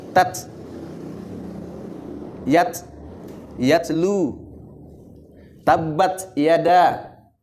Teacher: Ada nafas mengalir kayak model S, tabbat, itu otomatis itu terbentuk sendiri. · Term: huruf hams mengalir